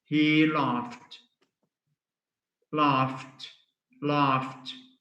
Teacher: laugh laugh ends in a sound which is voiceless